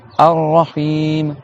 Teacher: Tu as le Ha avec le I prolongé.